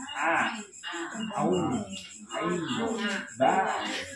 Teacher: Ini ain bukan ngain tapi ain, huruf ain. Ya, ain, huruf tenggorokan sini